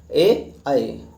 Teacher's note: कंठ तालव्य स्वर यानी कंठ और तालू दोनों का इस्तेमाल होगा